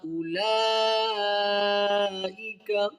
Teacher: واو نہیں پڑھیں گے، واو سائلنٹ ہے